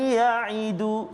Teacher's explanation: Kadar dengung dia dua harakat. Sekali lagi, ya'idu, satu itu idgham ma'al ghunnah kan. · masukkan nun mati ke dalam ya dengan dengung, beserta dengung. Ya'idu, dua harakat.